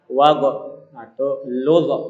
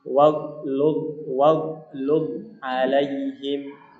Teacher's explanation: Salah ketika kita baca wagh atau ludh, salah. Jadi dia bukan huruf qalqalah, tidak boleh dipantulkan. Cara bacanya adalah waghlud alaihim ya, him.